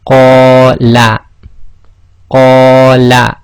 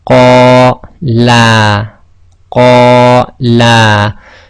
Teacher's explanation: So if you notice, the la was longer than the first la.